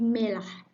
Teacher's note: He pronounced it to be melah. There is an omission of the R in the middle of the word and replacement of the sound R become L.